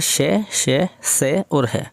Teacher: घर्षण से उत्पन्न वायु से उच्चारण हो रहा है इनका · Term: ऊष्म व्यंजन